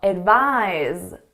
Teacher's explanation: Our verb is pronounced as a Z.